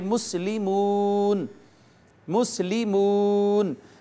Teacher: آپ یہاں پہ دیکھیے کہ یہ واو ہے، واو کا ما قبل میم ہے اور میم کے اوپر ضمہ ہے یعنی میم مدموم ہے، تو واو سے پہلے پیش آ گئی ہے، اس وجہ سے واو کو ہم کھینچیں گے اور پڑھیں گے مسلمون، مسلمون۔ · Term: واو مدہ